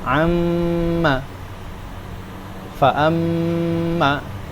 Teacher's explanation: Kaidah umum ghunah idgham atau yang ber yang berbentuk dengung berbau dengung itu dua harakat panjangnya tidak lebih dan tidak kurang.